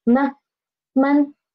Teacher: So for the neutral tone, we should read this neutral tone soft and quick.